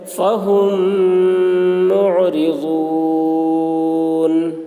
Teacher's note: میم ساکن کے بعد میم آ رہا ہے، اس لیے میم کو میم سے ملا کر غنہ کے ساتھ پڑھیں گے، اس کو ادغام شفوی کہتے ہیں۔